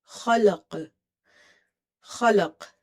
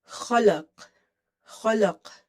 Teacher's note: So kha is heavy. Qaf is qalqala because we are giving it sukoon, we are pausing at it.